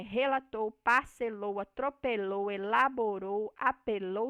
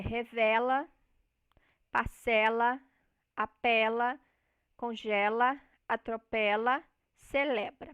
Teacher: no pretérito perfeito nós vamos ter o e fechado